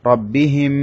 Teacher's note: মিম সাকিনের পরে মিম এসেছে সে কারণে এখানে মিমটা গুন্না করতে হবে